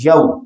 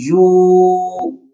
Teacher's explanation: जबर है, तो ये लीन कहलाएगा, लंबा नहीं करेंगे इसको, नरमी से पढ़ेंगे।